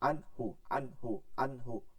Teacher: আমরা ইজাহার পড়বো দ্রুত, ঠিক আছে, কখনো ধরে ধরে পড়বো না।